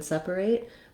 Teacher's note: I want to have length and a clear vowel on the sep